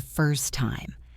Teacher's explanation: First time became first time dropping the T.